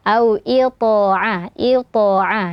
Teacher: tho sukun sebelumnya huruf berharakat kasrah juga dibaca tebal ya qalqalahnya tebal